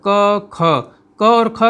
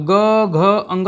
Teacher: क और ख का उच्चारण करेंगे तो क्या हो रहा है, हमारे स्वर तंत्रियों में कंपन नहीं हो रहा है। और ग घ अंग कहते हैं तो हमारे स्वर तंत्रियों में कंपन होता है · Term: अघोष